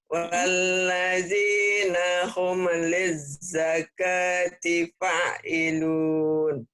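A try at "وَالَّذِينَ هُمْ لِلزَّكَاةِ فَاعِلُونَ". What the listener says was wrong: Fa-nya panjang. Fa'ilun. Walladzina hum lizzakati fa'ilun.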